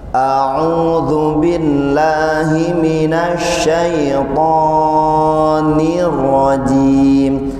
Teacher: Huruf fa terlalu panjang yang seharusnya matabi'i 2 harakat.